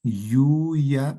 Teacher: la ya de yuya en la que no hay contacto con él. La parte media de la lengua no llega a chocar o no llega a estar en contacto eh con el paladar.